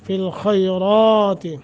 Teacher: خیرات خا کو موٹا کرنا ہے مگر نرمی کے ساتھ، را کو موٹا کر کے پڑھیں گے